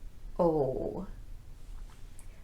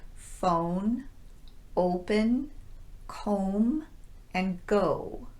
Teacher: first one i want to mention is the long o sound notice that my lips are very rounded oh this sound is found in words like phone open comb